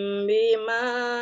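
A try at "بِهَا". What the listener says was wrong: Bukan bima, biha.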